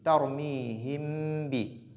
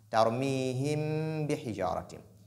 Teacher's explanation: Donc, quand ba vient après nun, s'il y a ghunna, c'est au niveau du mim, pas au niveau du ba, parce que ba n'a pas de ghunna. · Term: al-ikhfa